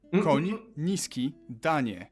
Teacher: You start with an N and soften it to ni